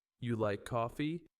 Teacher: For instance, if you say you like coffee with a rising tone, it sounds like you're checking. But if you say you like coffee, with a falling tone, it sounds like you're stating a fact.